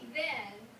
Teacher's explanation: when you say then you can feel your throat vibrate you can feel your vocal cords